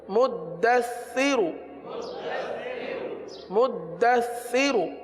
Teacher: سا میں سیٹی کی آواز نہیں آتی, سا میں زبان کا سرا اوپر کے دانتوں کے اندرونی کنارے پر لگتا ہے